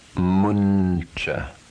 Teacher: Anusvara followed by a palatal consonant is pronounced nya without the following a.